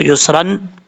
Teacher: اب یہاں پر اگر وقف کریں گے تو ایک زبر کو الف سے بدل دیں گے، یسرا پڑھا جائے گا، وقف نہیں کریں گے تو یسرن پڑھیں گے، ایک الف کی مقدار غنہ کر کے نون تنوین کا اخفاء ہوگا